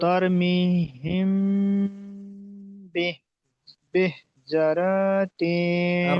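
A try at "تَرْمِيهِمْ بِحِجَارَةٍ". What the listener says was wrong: র টান হয়ে গেছে, যা টান হবে। তার মিহিম বিহিজারাতিন।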